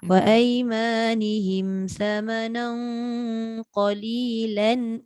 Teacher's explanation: Tak dengung. Samanan dengung, qalilan tak dengung. Kalau kita tengok tanda tanwin tu tak sama.